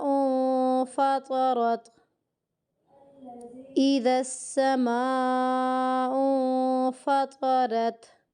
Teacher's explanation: حمزہ کو نون کے ساتھ ملاتے ہو یہاں پہ اخفا ہو رہا ہے